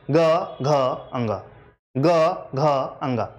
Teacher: गा घा और अंगा जब आप बोलते हैं तो आपके स्वर तंत्रियों में क और खा की अपेक्षा ज्यादा मूवमेंट होती है